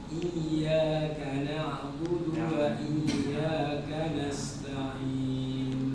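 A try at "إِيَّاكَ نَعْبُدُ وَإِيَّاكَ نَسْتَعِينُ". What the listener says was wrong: Sama, ainnya seperti ada qalqalah. Na'budu.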